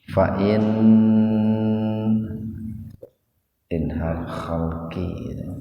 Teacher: Fa'in inhal khalqi, nun mati ketemu huruf H, jadi dibacanya jelas di tenggorokan, bunyinya N, tahan dua ketukan itu